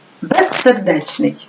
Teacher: перед с вимовляється як звук с